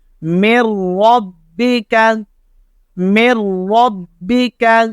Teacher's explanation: اب یہ را آ گیا نون ساکن کے بعد, یہاں ادغام تو ہوگا لیکن غنہ نہیں ہوگا